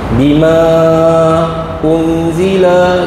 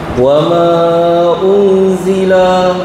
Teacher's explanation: Bima unzila, yang tu alif bertemu dengan hamzah dalam 2 kalimah. Bima tu kalimah pertama, unzila kalimah kedua, mad jaiz munfasil. Baca 4 atau 5 harakat, ya. Paling pendek 4, ya.